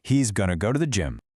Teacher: Going to becomes gonna. Tothe gets reduced way down.